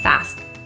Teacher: The T in the ST for fast is often not fully released and it's kind of stuck in the mouth, fast. It's a held T.